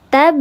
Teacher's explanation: Ya, tab ada huruf ba yang dia harakatnya sukun asli di atas huruf ba, maka nama hukumnya adalah qalqalah sughra, sahih. Maka dibacanya diledakan, meledak, diledakan, tapi ledakannya natural saja, tidak dibaca memantul sekali gitu, karena dia sughra, kecil.